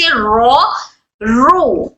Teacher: را کے اوپر اگر فتحہ اور را کے اوپر اگر دمہ، یعنی را کے اوپر جب زبر اور پیش آ جائے تو اس والی را کو ہم موٹا پڑھیں گے